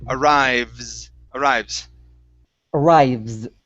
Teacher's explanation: that E in between the V and the S, we're not going to pronounce that. It's arrives.